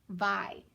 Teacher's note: then i have a v and i have an i and if i don't have anything behind the i that means that that vowel is open and that consonant is open so the i is gonna be long